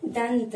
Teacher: लिखते हैं अनुस्वार लगाकर, लेकिन उच्चारित करते हैं त वर्ग के पंचमाक्षर यानी न का। तो दंत, उच्चारण क्या करते हैं, दंत।